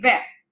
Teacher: Because in French, I tell you one more secret that you pronounce only till the last vowel in the word. So here the last vowel is I. So we do not pronounce NGT. It's simply vingt.